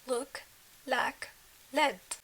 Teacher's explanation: articulated from the tip of the tongue and the gum surrounding your upper front teeth